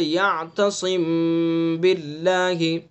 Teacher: اخفا کی تعریف میم کو ادا کرنے کے وقت ہونٹوں کی خشکی کے حصے کو نرمی کے ساتھ ملا کر غننے کی صفت کو ایک الف کے بقدر بڑھا کر خیشوم سے ادا کرنا، یہ تعریف ہے اس کی۔ خیشوم سے ادا کیا جاتا ہے اخفا۔ قاعدہ اس کا یہ ہے کہ میم ساکن کے بعد اگر با آوے گا تو اخفا ہوگا، جیسے یعتصم باللہ۔